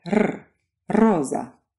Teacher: your tongue goes right up against your alveolar ridge. It softens a bit to allow air to come through, and as air comes through, it vibrates your tongue up and down against that ridge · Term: trilled R